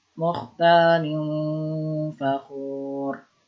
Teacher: Mukhtalin fakhur, ditahan dulu. Mukhtalin, ditahan dulu 3 harokat, didengungkan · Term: ikhfa